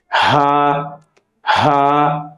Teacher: হার মাখরাজ হইল হলকের শুরু হইতে অথবা কণ্ঠনালীর শুরু হইতে উচ্চারিত হয় হা। হা একদম স্বাভাবিক।